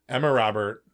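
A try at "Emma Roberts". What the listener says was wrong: With an S.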